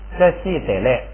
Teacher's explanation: 它累是本来是3声，但是放在第2音节呢，不取这个后部声，所以就降成这个4声